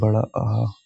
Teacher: जीभ के पिछले हिस्से से जो उच्चारित होते हैं उनको बोलते हैं पश्च स्वर।